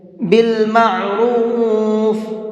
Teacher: عین کو حلق سے نکال کر کے پڑھیں گے